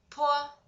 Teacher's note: like p in English word pull, but invariably produced with a strong puff of air